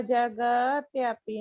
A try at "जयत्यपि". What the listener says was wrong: हाँ, इसको जगत्यपि नहीं बोलना है, इसको जयत्यपि। हाँ जयत्यपि, है ना। यहाँ ग नहीं है, ज य है, य।